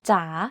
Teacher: In rising tone, the pitch goes down first and then goes up.